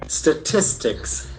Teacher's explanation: The accent falls on the second syllable.